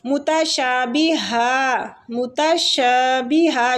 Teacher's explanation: شین کو کھینچیں گے کیونکہ اس کے ساتھ الف مد لگا ہوا ہے